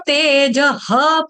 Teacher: पूरा ह का उच्चारण नहीं करना, विसर्ग जो है इसका आपने हलंत ह, आधा ह बोलना है।